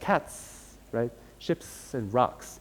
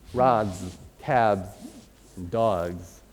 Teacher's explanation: the plural morpheme comes up as an S because it's also whispering